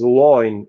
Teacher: So in early 18th century, Alexander Pope was rhyming words such as join and line. And line was actually pronounced as loin in his dialect